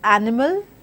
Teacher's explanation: words such as animals where we have stress unstressed unstressed pattern